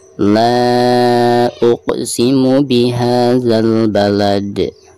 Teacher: ketika diwakofkan itu harus disukunkan disertai dengan pantulan yang tebal ya karena dihukumi qalqalah kubro.